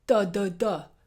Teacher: it's making an explosion off the back of the teeth